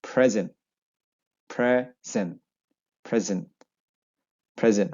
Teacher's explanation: if you have a noun it has two syllables uh it has the first syllable stress